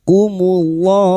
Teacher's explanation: dibaca wakaf mad arid li sukun empat harakat. Kita panjangkan.